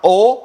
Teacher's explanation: ऐसे स्वर जिनका उच्चारण करें और हमारे होठों का जो होठों का जो आकार है जो आकृति है वो गोल हो जाती है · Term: वृत्ताकार स्वर